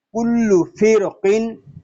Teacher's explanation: را ساکن جو ہے وہ پر اس لیے ہو رہا ہے کہ را ساکن کے بعد حروف مستعلیہ میں سے قاف اسی کلمے میں آ گیا ہے